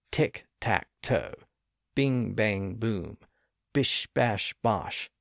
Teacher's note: lower or further back like a or o or o so we have this same movement from high to low and front to back as we progress through the sequence